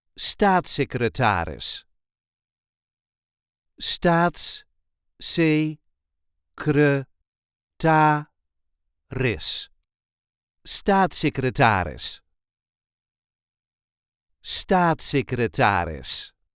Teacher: There is a light emphasis on the first syllable.